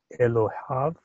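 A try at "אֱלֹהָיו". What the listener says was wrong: No, it's right, Elohav.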